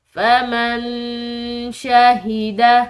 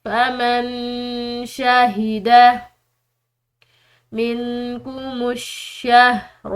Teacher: آگے دیکھیے، فَمَن شَهِدَ، نون ساکن ہے، اس کے بعد شین حروف اخفا میں سے ہے، تو یہاں پر ہم نے جو ہے نون ساکن پر اخفا کرنا ہے۔